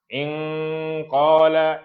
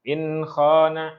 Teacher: Jadi lidah tersebut bila kita sebut secara dengung ikhfa jadi dia lidah akan ke belakang.